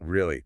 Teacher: Dragging it out, dipping down